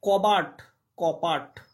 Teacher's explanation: বটা কিসে পরিণত হলো পয়ে পরিণত হলো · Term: অঘোষী ভবন